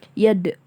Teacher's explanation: di sini ada huruf dal sakinah atau sukun, jadi hukum bacanya itu qalqalah. Yad, memantul.